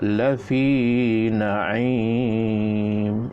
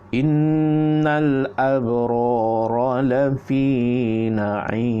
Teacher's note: la fi itu panjangkan sikit 2 harakat. Innal abrara lafi na'im, panjangkan.